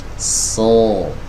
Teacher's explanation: ketika kita mengangkat lidah bagian belakang, konsekuensinya suaranya menjadi menebal. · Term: tebal suaranya